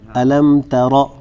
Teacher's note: تا کو باریک پڑھیں گے, را کو موٹا پڑھیں گے